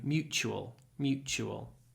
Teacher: the t is pronounced more like a CH because it comes before a u